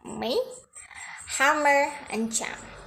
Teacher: Next manner is nasal. Its sound produced with the airstream passing through the nose. · the lips close and the airstream is being stopped, but the air actually leaves the nasal cavity.